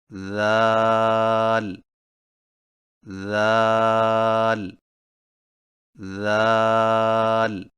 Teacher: ذال کی ادائیگی میں زبان کی نوک کو سامنے والے اوپر کے دو دانتوں کے اندرونی کناروں سے نرمی سے لگا کر باریک آواز میں پڑھیں